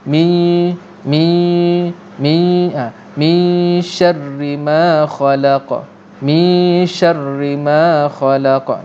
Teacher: pastikan ikhfa kita berbunyi nun yang nun mati yang telah ada unsur-unsur shin dalam sebutan nun yang sedang didengungkan.